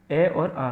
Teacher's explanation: इनका उच्चारण स्थान कंठ होता है जो हमारा य कंठ है ये कंठ से बोले जाते हैं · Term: कंठ स्वर